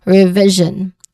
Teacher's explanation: So the second syllable here is the stressed syllable. So you say it as revision.